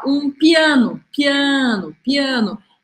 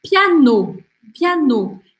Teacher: Esse A, em português, ele não é muito sonoro. Já em francês, você tem que fazer esse som bem aberto.